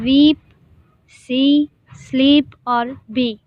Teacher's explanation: ای کے بعد دوسرا ای یہاں پہ آ رہا ہے تو ہم لوگ اس کو تھوڑا سا کھینچ کے پروناؤنس کریں گے